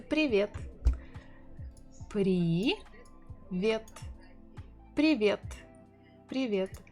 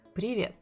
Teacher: the correct way is to say привет with stressing the second syllable, but if you say привет, a lot of people will still understand you, especially if you're a foreigner.